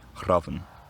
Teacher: Here, as usual, the final a disappears and we're left with a word where the entire nucleus of the second syllable is just a consonant, n